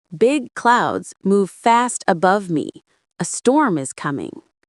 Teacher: Don't release the T in fast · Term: T sound